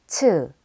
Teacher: Ch is a stop plosive with a stronger aspirated sound than j.